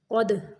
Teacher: قاف کو موٹا پڑھنا ہے، دال کو قلقلہ کرنا ہے